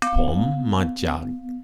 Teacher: Pom and chan are rising tones. Ma, a flat tone, and jag, low tone.